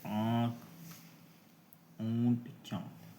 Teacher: अनुनासिक स्वर ध्वनियां होती हैं जिनका उच्चारण मुंह और नाक की सहायता से किया जाता है। · अनुनासिक के उच्चारण में मुंह से अधिक एवं नाक से कम हवा सांस हवा निकलती है।